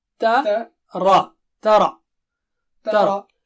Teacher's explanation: علم مت پڑھیے، علم واضح ہونا چاہیے۔ ترا، تا پتلا ہے اور را موٹا ہے